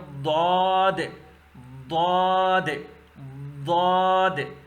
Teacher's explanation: دال کو موٹا کر کے ضاد پڑھو، لیکن مخرج وہی رہے گا، نکلنے کی جگہ وہی رہے گی. · اوپر داڑوں کی جو جڑ ہے، آپ کے دونوں سائٹ پہ جو اوپر کے داڑے ہیں، داڑوں کی جو جڑ ہیں، جڑوں کی جڑ ہے، جڑوں کے ساتھ زبان کے جو سائٹس ہیں وہ جڑوں کے ساتھ مل جائیں گے تو یہ ضاد ادا ہوگا